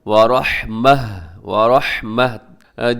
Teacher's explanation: جو یہاں پر گول تا ہے جس کے اوپر دو نقطے ہیں، وقف کریں گے تو اس کو ہا کے ساتھ بدل دیں گے.